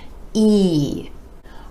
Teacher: our next four letters have the same vowel sound e e the sides of the lips retract just a bit for this sound and you want to give it more stretch more duration and a little more energy